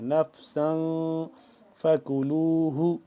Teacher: تنوین ہونے کی وجہ سے یہاں پہ ہم نے کیا کرنا ہے؟ اخفا کرنا ہے، ناک کے اندر لے جا کر پڑھنا ہے